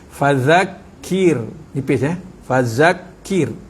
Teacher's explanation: ra yang mati dengan baris bawah, bacaan dia nipis.